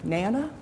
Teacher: we get these weak initial syllables dropped out until around two and a half for typically developing children